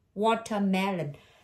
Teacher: Chữ này nó nhấn âm thứ ba, tại vì chữ bốn tiết thường hay nhấn âm ba.